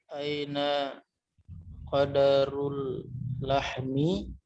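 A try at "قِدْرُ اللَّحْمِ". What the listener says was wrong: Qidru ya, qidru. Kalau qadaru nanti malam Lailatul Qadar. Qidru.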